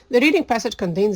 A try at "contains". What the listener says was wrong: Contains. It sounds like a D instead of a T. Be careful about your T and your D consonant sounds.